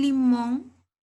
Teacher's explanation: palabra aguda entonces limón se prestaba a una palabra aguda porque la mayor fuerza de voz está en la última sílaba